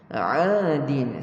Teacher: Untuk huruf ain, makhraj dia di tengah halkum. Kita panggil wasatil halqa.